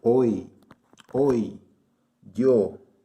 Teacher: Se pronuncia con una I, pero en algunos casos con D del portugués.